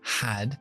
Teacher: la a corta es un poco más larga porque la d Sonora